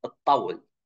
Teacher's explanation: ta followed by ta is pronounced as geminated ta